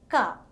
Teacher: For the production of this sound, the back of the tongue is raised and it makes contact with the soft palate.